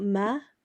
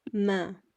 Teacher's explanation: couple more examples we can do Ma again it's not ma it's Ma with a nasal sound at the end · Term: Bindi